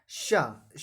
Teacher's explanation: श का जो उच्चारण स्थान है वो तालु होता है।